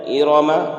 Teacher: ارم را میں زبر ہے اس لیے را پور ہوگی